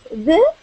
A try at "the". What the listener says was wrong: Okay, so that is pronounced the. The. Yep, not they, but the.